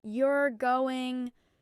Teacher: If they say you're going with a falling tone, it's a statement.